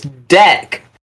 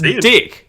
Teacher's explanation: for some reason, Kiwis they swap in an I instead of an E.